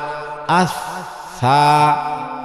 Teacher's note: আস সা নরম, শ্বাস চালু থাকবে।